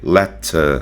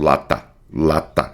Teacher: Só que aqui no let veja que eu eu suavizo mais ainda o t let eu coloco um sopro, um certo um arzinho, né?